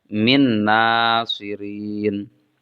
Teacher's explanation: ada nun sukun kemudian diikuti oleh Nun maka Nun sukunnya dimasukkan ke dalam Nun